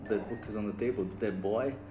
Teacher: Que tem o TH, esse TH do the que vibra, que eu até coloquei aqui, que é com a língua atrás dos dentes